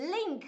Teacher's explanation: light L คือลลของฝรั่งมีการเกร็งลิ้นนะคะแล้วมีการออกเสียงมาจากท้องทุกคน